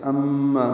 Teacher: میم مشدد پہ غنہ اور ما الف مدہ، دو حرکات لمبا